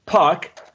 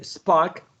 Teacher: you say park, big puff of air. When you say spark, no puff of air. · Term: aspiration